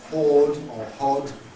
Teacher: That relatively open vowel with rounding